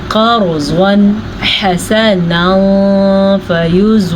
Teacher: را ساکن سے پیچھے والے حرف پہ زبر ہے تو را ساکن کو ہم پر پڑھیں گے، اور ضاد کو پر پڑھیں گے کیونکہ ضاد تو ہمیشہ ہی پر پڑھا جاتا ہے۔